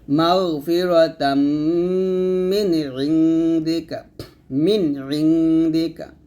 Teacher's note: মিমকে গয়ন করতে হবে মোটা করে